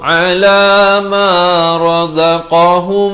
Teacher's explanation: mim mati bertemu mim, idgham mislan saghir, dengungkan dua harakat